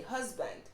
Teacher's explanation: a word like husband the s gives a z sound